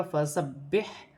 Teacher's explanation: با مشدد ہے، با کو جماؤ کے ساتھ ادا کیا جائے گا، فسبح، پھر ہا کے ساتھ ملا کر پڑھا جائے گا، ہا ساکن ہے، ہا کو اپنے مخرج سے بھی ادا کیا جائے گا۔